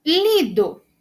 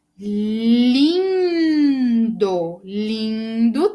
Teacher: Lido não tem som nasal, mas lindo, lindo tem.